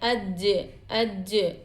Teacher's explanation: قلقلہ کی آواز میں ڈبل پن، گونج پن جیسی سنائی دیتا ہے